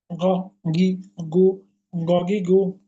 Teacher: গণকে জিজ্ঞেস করলে কোথা হতে, কণ্ঠনালীর শেষ হতে। কিভাবে? মোটা ও আংশিক খরখরা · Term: গইন